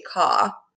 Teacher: this sound, the r, is generally just a long vowel in this RP British version of English